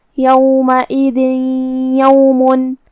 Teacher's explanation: کلمت یوم یا حروف الادغام بغنہ میں سے ہے اور ادغام کا معنی ہے حرف کو حرف میں داخل کرنا. تو ہم یہ تنوین کو یا میں ملا کے غنہ کے ساتھ اور تشدید کے ساتھ یہ حکم کو ادا کریں گے